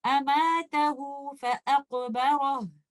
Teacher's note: So if you are choosing to continue recitation, you will recite it with Maddu Sila Sughra by giving it two counts